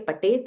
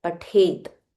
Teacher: make sure you don't say Patet, it is Pathet. Stress on the Tha.